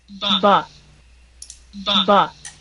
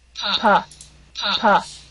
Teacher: it's going to be the same bilabial position, right? The manner doesn't change, the placement doesn't change, but what does change is the voice box. And you'll see the voice box here in the picture, I'm circling on it with my mouse, is going to vibrate.